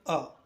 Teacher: मध्य स्वर जीभ का मध्य भाग सक्रिय होता है। अ मध्य स्वर होता है।